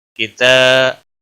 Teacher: تاکہ اوپر کھڑی زبر ہے، 1 الف کے برابر کھینچ کر پڑھیں گے